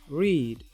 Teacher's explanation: /r/ is voiced post-alveolar gliding. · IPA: /riːd/